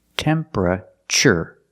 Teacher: the TU makes a CH sound like chicken temperature remember it's three syllables temperature not temperature not four syllables